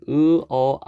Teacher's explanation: 있는 애들을 저모음이라고 그래요 여러분들이 으어아 하면 어떻게 돼요 으어아 하면은 턱이 점점점 내려가죠 그렇죠 바로 그 바로 혀의 높이가 낮아진다는 얘기입니다 으어 아 예 혀의 높이가 낮아져요 그래서 고모음 중모음 저모음 이렇게